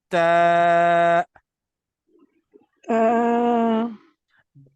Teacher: The tip of the tongue touches the back side of the upper teeth.